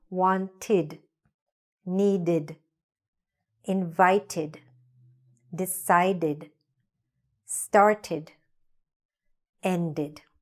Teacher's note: We just make the ending stronger and we say like a ud sound.